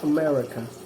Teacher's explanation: Schwa is an unstressed mid-central vowel, such as the usual sound of the first and last vowels of the English word America